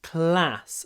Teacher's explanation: И еще л длиннее на английском, чем русский класс.